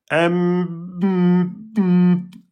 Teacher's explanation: si je dis un masoukoun M et que je ferme le nez, M, eh bien, le son va se couper. C'est la caractéristique aussi de la rouna pour la lettre mime et la lettre noun.